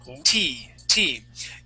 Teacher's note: Your tongue is going to be curved, and it touches the top of your mouth right at the base of your teeth.